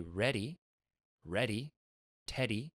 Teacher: that d in there is a flick of the tongue and it's touching the same spot that this this one does · But that's why I call it RDL, because we do that also with D in English. When we say ready, ready, teddy, right? That D in there is a flick of the tongue